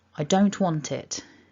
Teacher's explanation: Because the word want ends in a consonant and the next word begins with a vowel sound, it sort of jumps across a little bit, so we're connecting it up. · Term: joining